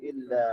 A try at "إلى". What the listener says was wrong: Don't say إلا, it's إلى. إلى.